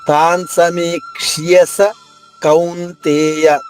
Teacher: క ష య ఈ మూడు కలిస్తే క్ష్య అయింది. మూడు స్పష్టంగా వినిపించాలి ముందు క పొల్లుగా చెప్పి షియ విడిగా చెప్తే ఉచ్చారణ సులభంగాను మూడు అక్షరాలు వినిపించేలా మనం ఉచ్చరించగలగం